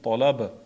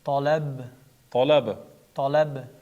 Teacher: B qalqala harfi sukun bo'lgani uchun tolab. Qalqala qilinadi.